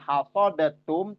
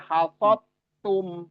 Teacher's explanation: Jadi dal melebur atau dimasukkan. Jadi suara dal sudah nggak terdengar karena dia masuk ke huruf yang kedua atau huruf di depannya. Ya, masuk ke huruf ta, melebur ke huruf ta, namanya diidghamkan.